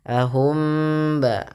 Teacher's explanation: Kemudian mim mati bertemu ba, tahan ya. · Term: ikhfa syafawinya